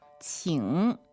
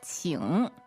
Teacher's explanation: So that's Q-I-N-G, third tone. That's right. 请 So it dips, right?